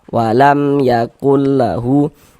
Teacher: Nah, maka berarti hukumnya idhar syafawi. Baca jelas bunyi mim sukunnya.